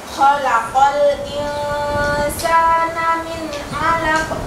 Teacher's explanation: nun sukun bertemu dengan ain itu baca idhar